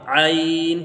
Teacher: عین حلق سے نکلے گا